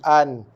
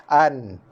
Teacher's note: bila kita sebut an, hujung lidah kita mesti menyentuh rumah nun, menyentuh makhraj nun, iaitu hujung lidah menyentuh gusi atas ataupun langit depan